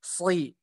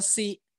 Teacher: Seperti jadi yang membedakan huruf sod dengan huruf sin itu adalah naiknya pangkal lidah di huruf sod